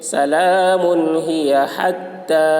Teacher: تا کے اوپر کھڑا زبر ہے، کھڑا زبر برابر ہوتا ہے الف مدہ کے، اس لیے کھڑا زبر کو ایک الف کے برابر کھینچ کر پڑھیں گے